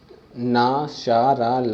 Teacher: जीवा की नोक जब ऊपर के दांतों की पंक्ति के सामने वाले दांत के ऊपरी हिस्से से संपर्क में आकर वायु के प्रवाह को अवरुद्ध करते हैं, रोक देती है, तो ऐसे उच्चारण स्थान को वर्तस्य कहते हैं।